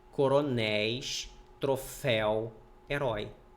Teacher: Oi você abre a boca para pronunciar por isso que é ditongo aberto porque há uma abertura da boca